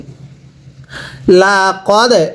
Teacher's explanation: এরপরে লাম জবর লা কফ দাল জবর কদ দালে যদি সাকিন হয় ধাক্কা দিয়ে পড়তে হয়